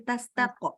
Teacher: Tastaqsimu itu pantulannya jangan tastaqe, tapi tastaqo.